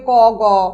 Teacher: প্রতি বর্গের প্রথম এবং তৃতীয় অর্থাৎ ফারস্ট এবং থার্ড এই দুটো ধ্বনির উচ্চারণে নিঃশ্বাস জোড়ে নির্গত হয় না বলে সেগুলোকে বলা হয় অল্প প্রাণ ধ্বনি বা আনঅসপিরেটেড সাউন্ড।